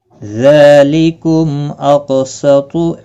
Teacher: ذالکم، ذال کے اوپر کھڑی زبر ہے، ایک الف کی مقدار کے برابر کھینچ کر پڑھیں گے۔ میم ساکن کے بعد حمزہ آیا ہے، اظہار شفوی ہوگا، قاف مستعلیہ ہے، پر پڑا جائے گا، اس پر قلقلہ بھی ہوگا، ساکن ہے۔